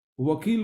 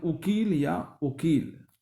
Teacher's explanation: व को व्यंजन रूप ब और स्वर रूप उ ओ करके बोलते हैं